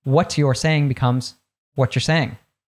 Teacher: when we have a T plus a Y, usually we'll change it to a ch sound. So look out for this, for example, when you have the pronoun you, because it'll usually reduce, and if it has a T before it, we'll change it to that ch sound.